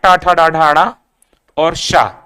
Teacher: कहां से बोले जाएंगे? मूर्धा से बोले जाएंगे,